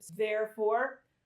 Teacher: Therefore, I hear a vibration. So that's voiced.